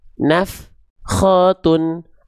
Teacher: antara af dengan kho itu nggak boleh ada jeda hening